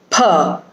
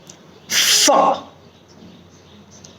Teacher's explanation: it is a labiodental sound, which means the upper teeth will touch the lower lip. The upper part of your teeth, this will touch the lower lip and air will come out of the mouth.